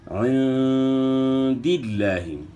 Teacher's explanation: ایک تو آپ نے عین کے بعد گلے کے درمیان سے نکالنی ہے، دوسرا نون ساکن میں آپ نے اخفا کرنا ہے، اخفا کے ساتھ غنہ کرنا ہے